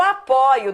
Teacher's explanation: ele é o ditongo aberto oi no meio da palavra